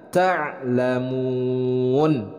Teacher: Jadi bacanya yang benar adalah ta'lamun. Mun itu adalah mad arid lisukun, dibacanya panjang.